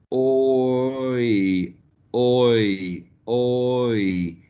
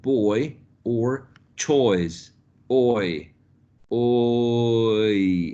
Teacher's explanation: So if you produce a sound, you say oi, oi, oi, and you pay attention to what your tongue is doing, your tongue is at the back, o, and it's going forward and a bit higher to reach the sound I, to produce the sound I, oi, as in boy or choice, oi, oi, okay?